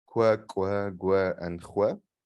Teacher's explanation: what we call labial velars or labialized velar stops, and also a labialized uvular fricative